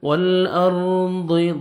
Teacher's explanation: آپ نے ہلانا ہی نہیں ہے، ہم را ساکن سے پہلے، را جزم سے پہلے زبر ہے، را کو آپ نے پر کرنا ہے